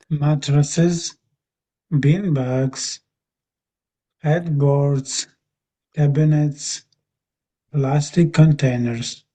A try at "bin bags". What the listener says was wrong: Yeah, yeah, that's it. Yeah, that's it. That's it. That's good. That's really good. Very good.